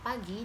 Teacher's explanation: Pada kata pagi, bunyi P ini harus dilepas untuk bergabung dengan bunyi A.